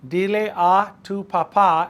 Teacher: Accent on the last A of papá.